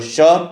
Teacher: तालव्य स में जिह्वा तालु को छूती है।